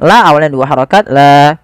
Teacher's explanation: La karena adanya hamzah maka dia menjadi empat harakat atau lima harakat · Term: mad wajib muttasil